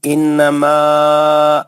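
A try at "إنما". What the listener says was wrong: اور ایک پھر پڑھے، پھر شروع سے پڑھے، انما غنہ اچھا کر.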